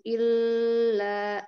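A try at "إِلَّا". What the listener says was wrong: Pertama, lamnya tidak perlu ditahan ya. Cukup ditekan saja lam tasydidnya, tidak perlu lama il. Kemudian la-nya tadi kurang panjang ya.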